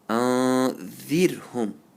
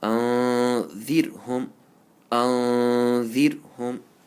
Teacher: So you have to say very lightly, gently. Make sure you don't roll the tongue when you pronounce the ra. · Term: empty mouth